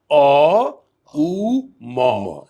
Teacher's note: हमने सिर्फ अ से अपने मुंह को बंद करता गया, ऊ आ गया, और पूरा बंद किया तो म आ गया। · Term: ओम